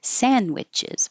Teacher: And sandwiches, we don't say the D. You could put your tongue in the D position, but it's the same as the N, sand, and you're not releasing the D.